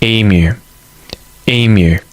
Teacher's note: where's the emphasis? On the first syllable.